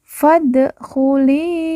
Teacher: fad Fa langsung masuk huruf Dal Alif tidak dibaca fad lalu Dal sukun atau Dal mati kita baca karena merupakan salah satu dari huruf pantul atau huruf Qalqalah jadi kita harus baca pantul